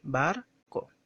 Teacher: la segunda sílaba es la que se pronuncia sin fuerza de voz, de forma natural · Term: Átona